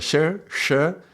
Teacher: This sh is with the tongue up, like towards the roof of the mouth.